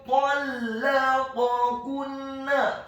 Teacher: huruf nun-nya ditasydidkan dengan gunnah atau dengung seperti mat atau panjang 2 harokat. · Huruf nun yang sukun bertemu dengan huruf ta yang fathah, hukum bacaannya adalah ikhfa. · huruf qaf-nya dibaca tafkhim tebal fathah 1 harokat. Huruf kaf-nya dibaca tipis dhammah 1 harokat.